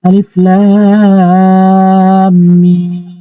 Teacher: লাম আগে টানতে হবে, তারপর লাম উচ্চারণ সম্পূর্ণ করতে হবে। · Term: মদ্দে লাজিম হরফি